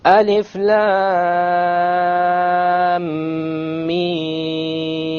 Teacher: the lam 6 harakas, the mim 6 harakas, and in between the 2 ghunna of 2 harakas